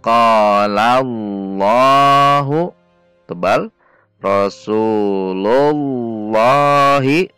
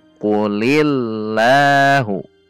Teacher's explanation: Jadi didahului fathah atau dhammah. Apabila didahului kasrah, dibaca tarqiq atau tipis.